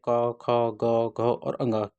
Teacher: क, ख, ग, घ और ङ के व्यंजनों का उच्चारण जो होता है ये कंठ से होता है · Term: कंठ ध्वनियां